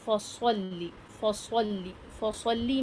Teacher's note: کہ ایک heavy letter ہے اور ایک لائٹ لیٹر ہے، فصل، اور سیٹی کی آواز کے ساتھ پڑھیں، ایک آواز سیٹی کی سنائی دینی چاہیے